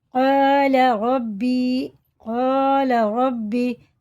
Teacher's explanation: قال ربی، قال ربی، را پر ہے، اور یہ الف سے پہلے زبر ہے تو یہ الف مدہ ہے، کھڑا زبر کی طرح کھینچ کے پڑھیں گے